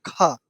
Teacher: उसके बाद दूसरा वाला वर्ण को बोलते हैं महाप्राण। इसके उच्चारण में तुम्हारे मुख से बहुत ज्यादा हवा निकलेगा।